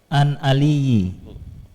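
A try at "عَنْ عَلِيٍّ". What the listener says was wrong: Di sini harusnya bukan ali. Aliyin. Pakai tanwin, ditambahi. Harokatnya an aliyin.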